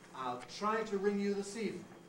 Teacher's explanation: The high head is said on a pitch well above the level of a low prehead. If you think of the low prehead, da da da da da da, as a kind of bass line, da da da da, you jump up to a high level of a high head, and it stands out because of this jump up.